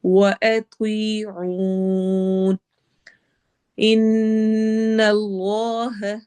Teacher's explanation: वअत्वीऊन इन्नल्लाह, नून नून गुन्ना है और इसमें जलाला के लाम को हम मोटा पढ़ेंगे क्योंकि उससे पहले वाले लफ्ज के एंड पर फतहा जबर आ रही है, और जब भी इसमें जलाला से पहले वाले लफ्ज जो होता है उसका एंड वाले हर्फ पर जो हरका होती है उसके मुताबिक हम इसमें जलाला के लाम को मोटा या बारीक करते हैं।